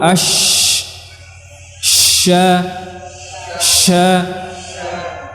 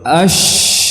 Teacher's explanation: dia juga punya sifat tafasyi yaitu apa menyebarnya udara di mulut